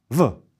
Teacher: The V in these borrowed words is pronounced as a voiced VV just like German W.